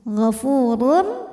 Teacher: maka tanwin dimasukkan ke ro tidak disertai dengung gfurur cukup ditekan masuk dengan sempurna tanwinnya ke ro ya gfurullah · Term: idgham Bil gunah